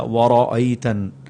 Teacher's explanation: یہاں پر را کے اوپر زبر ہے، اسے موٹا کر کے پڑھا جائے گا وَرَأَيْتَن، اور نون پر غنہ کرنا ہے۔